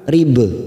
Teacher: Wadrib ada huruf ba sukun qalqalah sugro, kita pantulkan rib.